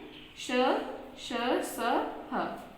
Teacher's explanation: इनका उच्चारण करते समय मुंह से हवा के रगड़ खाने के कारण उष्म यानी गर्मी पैदा होती है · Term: ऊष्म व्यंजन